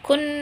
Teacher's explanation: ada Nun yang bertasydid ya dibacanya dengan dengung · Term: gunah